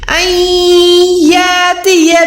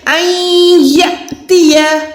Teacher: यहाँ पर अलिफ पे यानी हमजा पे सुकून है, जज़म है, तो हमने अलिफ को हमजा को झटका देके पढ़ना है। हम इसको अलिफ को लंबा करके नहीं पढ़ सकते।